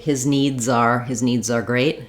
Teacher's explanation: as I link my Z is a Little Bit Stronger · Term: strong z sound